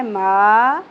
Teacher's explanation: یمنو میں سے میم آ گیا، ادغام مع الغنہ، نفسم ما، زبر کے ساتھ الف حرف مدہ ایک الف کے برابر کھینچنا ہے